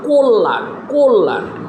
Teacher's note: এই লটা হইল মধ্যে, এর সাথে জফলা আছে, কিন্তু এই লটা দুইবার উচ্চারণ হয়েছে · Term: দ্বিত্ব উচ্চারণ